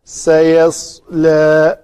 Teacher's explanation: صاد کو پر کریں گے، سکون اس کا پر ہوگا۔